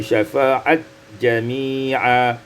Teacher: idghamut ta fil jim, diidghamkan ta pada jim menjadi syafa'at jami'a.